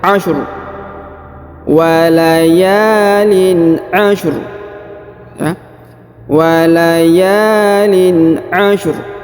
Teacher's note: Huruf ro-nya kita berikan sukun tapi tebal ya.